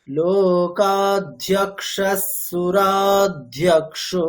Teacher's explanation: নানাবিধানি দিব্যানি নানাবর্ণাকৃতিনি চ অগ্রণীর্গ্রামণি শ্রীমাन् ন্যায়ো নেতা সমীরণঃ সহস্রমূর্ধা বিশ্বাত্মা সহস্রাক্ষः সহস্রপাত লোকাধ্যক্ষস। দেখুন বিসর্গের পরে স আছে, তাহলে ধ্যক্ষস স হয়ে যাবে